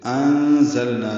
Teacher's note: انزلنا نون ساکن پہ زا آنے کی وجہ سے اخفا ہو رہا ہے، ذات سفید کی آواز سے ادا کریں گے